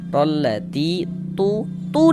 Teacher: sebelum ya sukun ada ini ada harakat kasrah maka huruf yang memiliki harakat kasrah dibaca panjang sehingganya ti dibaca panjang mad thobi'i panjang dua harakat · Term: Mad tabi'i